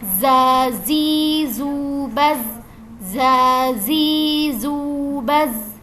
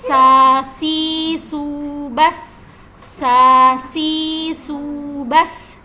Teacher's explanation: ujung lidah bertemu dengan diantara gigi seri atas dan bawah dengan meninggalkan sedikit celah antara ujung lidah dengan gigi seri atas dan bawah tersebut jadi